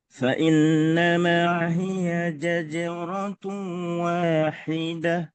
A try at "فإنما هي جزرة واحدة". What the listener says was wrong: za-nya lebih ditekan. Zaja. Zaja. Dimulai dari huruf Z. Zaja. Zajaratun. Fa innama hiya zaja. Hiya zaja. Hiya zajaratu wahidah.